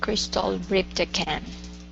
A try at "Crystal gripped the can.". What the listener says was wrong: Okay, nice job.